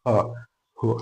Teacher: ഹിന് തടസ്സമില്ല കാറ്റ് പുറത്തോട്ട് വരാൻ മറ്റൊരു തടസ്സങ്ങളുമില്ല ഫ്രീ ആയിട്ട് പുറത്തോട്ട് വരുന്ന നേരിയ രൂപത്തിലുള്ള ശബ്ദമാണ് ഹ